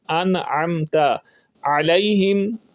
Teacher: عین کو حلق کے درمیان والے حصے سے پڑھیں گے